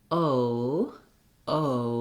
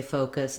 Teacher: We go from that tense O, and then we close the jaw, lift the tongue, and relax the lips a little bit. So it's not that I'm saying, when I say focus, it's not that I'm saying an O and an separately.